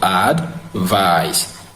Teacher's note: So advice is stressed in the second syllable, which is the vice.